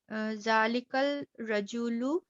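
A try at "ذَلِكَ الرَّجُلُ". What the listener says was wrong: ज़ालिकर रजुलु, कर हुरूफ शम्सी पढ़ाए थे ना, तशदीद आएगी। ज़ालिकर रजुलु,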